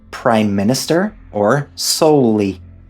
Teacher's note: We also find examples of gemination in words like “prime minister”, or “solely”, where the consonant sound is clearly held for a longer time than usual